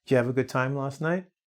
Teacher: So that have just disappears and becomes the v sound.